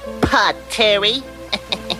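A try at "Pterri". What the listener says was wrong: That's pronounced Terry. The P is silent.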